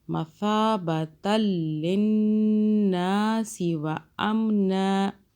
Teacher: تا کو سافٹ پڑھنا ہے، زبان کو ہلکا سا باہر کیجیے